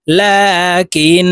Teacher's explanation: লাম খারা জবর লা কাফ নুন জের কিন ওয়াজিব গুন্না লাকিন লামের উপরে খাড়া জবর আছে তো এই লামকে এক আলিফ টেনে পড়বো